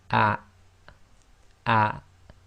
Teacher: And that is, remember, the hamza acts as the glottal stop in Arabic, and you should feel a slight blocking of the bottom of your throat. So ah, ah.